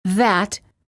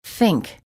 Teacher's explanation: there are two th sounds in English the voiced th as in that and the voiceless th as in think